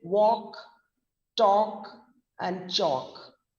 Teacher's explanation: here we are talking about the l words so where the l is silent